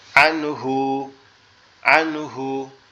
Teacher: গুন্না ছাড়া এটাকে স্পষ্ট করে পড়তে হবে